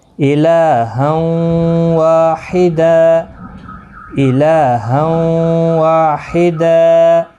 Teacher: تو آپ نے خیال رکھنا ہے یہاں پر یہ جو تنوین کے بعد یرملون کا واو آیا ہے، حمزہ زیر ای، لام کھڑا زبر لا، ہا واو دو زبر ہوں، واو زبر و، الہا و. اب واو کے ساتھ الف بھی ہے، مد بھی ہے، تو گویا کہ اس کو کھینچنا بھی ہوگا